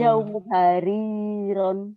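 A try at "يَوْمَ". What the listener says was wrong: zaum hariran. Kok nggak enak dengernya juga jaum-jaum. Nggak enak jaum. Zam bukan jaum. Zam hariron.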